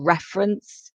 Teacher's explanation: reference with the stress on the first syllable